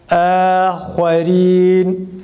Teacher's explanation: Hemze ince, ha ise kalın olduğu için fethalı medsiz a sesi çıkararak okuyoruz. Yalnız uzatmadan.